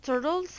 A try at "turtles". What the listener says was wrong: When you say the word turtle, turtle, not dirtles, but turtle. So I want you to review the pronunciation of the T and the D consonant sounds in the pronunciation area in my course.